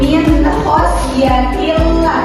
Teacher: Maka dibacanya jelas yaitu nun sukunnya dibacanya jelas tanpa ada dengungan sama sekali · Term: idhar